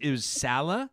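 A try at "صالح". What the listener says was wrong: The ha is very, very difficult for people, for non-native Arabic speakers.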